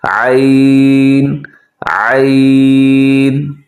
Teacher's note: عین، آئین کی ادائیگی میں سستی ہو جاتی ہے، لوگ اکثر اس کو آئین پڑھ دیتے ہیں، حمزہ کی طرح اس کی مشابہ آواز نکالتے ہیں جو کہ درست نہیں ہے